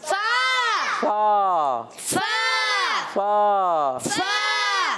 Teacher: اوپر کے دانتوں کے کنارے جب نیچے والے ہونٹ کے تر حصے سے لگتے ہیں تو ادا ہوتا ہے فا